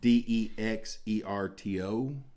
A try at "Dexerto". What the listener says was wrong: Dexerto, maybe, not Dixerto. Yeah.